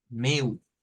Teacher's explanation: como está al final, es como una W, como una U, meu.